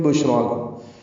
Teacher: شین ساکن پہ ہمس اور تفشی ہیں، اس میں سانس جاری رہتی ہے